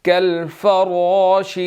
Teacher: را کو موٹا ادا کریں گے، اس کے اوپر زبر ہے